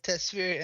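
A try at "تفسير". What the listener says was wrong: Tafsir, my friend, it's called it's called tafsir, not tasfir. No, you said tafsir, tasfir.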